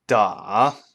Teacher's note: the pitch goes down and then back up